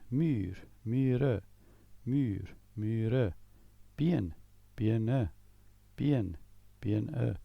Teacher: although the second vowel is removed, the sound stays long. In Afrikaans, a vowel has a long sound if it occurs at the end of a syllable, an open syllable.